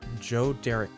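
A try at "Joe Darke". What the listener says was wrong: I think it's dark. I think it's dark. Like the E is silent.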